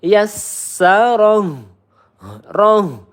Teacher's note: Hati-hati ya. Pangkal tenggorokan. Jangan tertukar sama ha yang tengah tenggorokan.